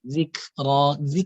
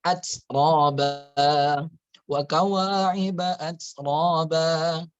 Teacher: Kemudian kafnya, kaf itu apabila dia sukun, dia ada hamesnya